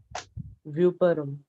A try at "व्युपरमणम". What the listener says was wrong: अरे वेपरम नहीं आएगा, वेपु व्युपरमणम ऐसा। अरे परम पढ़ रहे हो तुम लोग, रमणम लेना है इसलिए वो परेशानी हो रही है। तो परम शब्द क्यों बोलना चाहते हो? व्युपरमणम ऐसा बोलना।